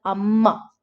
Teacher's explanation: in indian languages we do use double consonants like in malayalam we call our mother amma so there is a double consonant